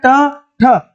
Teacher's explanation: ठ क्या है अघोष है और महाप्राण है